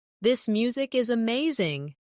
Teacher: Stress amazing to show enthusiasm.